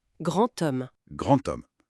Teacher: le D final, quand il est lié à une voyelle, il se prononce souvent comme un T